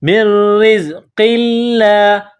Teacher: لفظ اللہ کے نام سے پہلے زیر ہے تو لفظ اللہ کے نام کو باریک پڑھیں گے